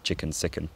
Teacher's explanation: the weak vowel merger that causes chicken and sicken to rhyme